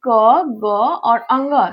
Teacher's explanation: अल्प प्राण के अंतर्गत मुंह से बहुत कम हवा निकलती है।